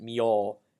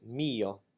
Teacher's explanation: practice to split the e and all between the two notes you definitely want to give that e vowel precedence because that is the stressed part of the word